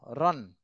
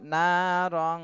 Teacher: ইকফা গুন্না নাকের বাঁশিতে গুন্না করতে হবে অনুস্বারের মতন অনুস্বার যেভাবে গুন্না করলে নাকের বাঁশিতে চলে আসে সেইভাবে গুন্না করতে